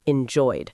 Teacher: Enjoy is a regular verb. Enjoy ends in a vowel sound, so the ed ending makes the d sound.